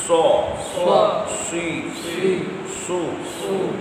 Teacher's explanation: سو میں سیٹی بھی ہے، اور یہ مستعلیہ یعنی اس کو موٹا بھی پڑھنا ہے۔ اگر آپ سیٹی ادا کریں پر نہ کریں تو یہ بھی سین بن جائے گا، اس لیے سیٹی ادا کرنی ہے لیکن اس کو پر بھی پڑھنا ہے، موٹا بھی پڑھنا ہے۔